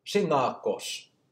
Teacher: with an apical alveolar S, so basically the tip of the tongue to the gum ridge, which sounds like an English to an English speaker's ear as a probably like an SH.